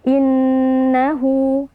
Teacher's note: Nah, di sini terdapat nun tasdid ya. Nun tasdid wajib kita baca dengan ghunah ya yang kita tahan atau kita panjangkan sekitar dua hitungan pelan ya. Jangan terlalu cepat atau jangan terlalu lama.